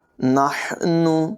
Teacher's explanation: ہا کی آواز حلق کے درمیان والے حصے سے نکالیں گے